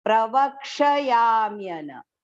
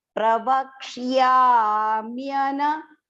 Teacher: The ksha is partial and it is joined to ya.